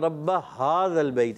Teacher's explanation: हा हलक के नीचे वाले हिस्से से